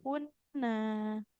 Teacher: Di sini nunnya fathah bertemu alif. Maka harus panjang.